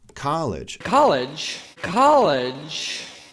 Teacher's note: in the North American accent it's pronounced with an a sound